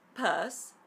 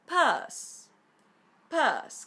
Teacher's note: No es schwa oficialmente, ya que la entonación cae sobre la vocal, es decir, que es tónica, pero como si lo fuera, que así os irá mejor.